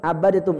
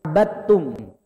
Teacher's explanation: Langsung aja diidghamkan. Dalnya ngalah.